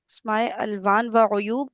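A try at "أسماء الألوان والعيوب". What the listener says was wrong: ई क्यों पढ़ रहे हैं? पढ़ रहे हैं इसको? अस्माइल अलवान क्यों पढ़ेंगे?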